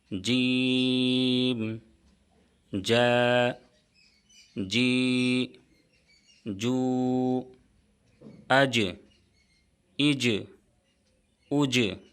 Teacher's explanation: जीम का मुखज है जुबान का बीज और ऊपर का तालु और जीम हरूफ कलकला में से है। इसलिए जीम में कलकला होगा।